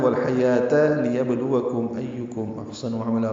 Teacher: یہ وقفن ہے، ملانا ہے تو والحیاة لیبلوکم ایکم احسن عملا پڑھیں گے. لیبلوکم میں لام کو جلدی ادا کرنا ہے، با ساکن پہ قلقلہ ہے، لام واو باریک جلدی پڑھیں گے، لام واو کو اور کاف باریک ہے، میم ساکن پہ اظہار شفوی ہے.